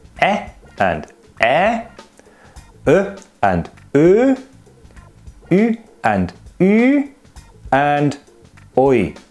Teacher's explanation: They are all front vowels, except for the diphthong, which starts as a back vowel but moves forwards. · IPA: /ɛ/ /ɛː/ /œ/ /øː/ /ʏ/ /yː/ /ɔʏ/